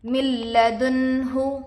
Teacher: نون پر جزم ہے، نون ساکن ہوگا، نون ساکن کے بعد حروف ادغام سے لام آ کر ہے، اس لیے بغیر غنہ کے ملا کر پڑھیں گے۔ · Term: ادغام بلا غنہ